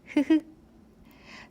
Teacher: It is aspirated consonant of 이응. The consonant 히읗 is pronounced by letting out a burst of air through the open vocal tract, typically from the glottis.